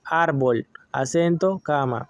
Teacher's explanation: Graves, el acento se ubica en la penúltima sílaba. No se tildan si terminan en N, S o vocales.